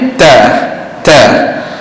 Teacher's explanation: rasa angin tu lebih kuat kerana tekanan angin ditahan di dalam mulut kita kemudian kita keluarkan suara itu serentak dengan angin maka akan terhasillah · rasa anginnya agak kuat untuk dikeluarkan kerana berlaku tekanan pada makhrajnya makhrajnya di mana hujung lidah letak di gusi atas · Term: huruf ta